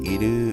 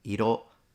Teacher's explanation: Already he says iru to mean colors. In Japanese would be iro. So same pitch, just a slight difference in the final vowel.